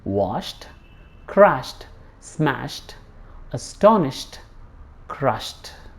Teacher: if there is sh sound before ed, the ed is spoken as t.